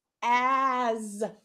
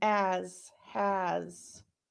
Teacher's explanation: We know it's an S, but it's the Z sound because a is voiced.